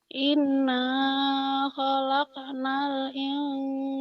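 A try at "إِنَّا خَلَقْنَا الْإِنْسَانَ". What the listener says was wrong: Bantobinya nggak usah kepanjangan.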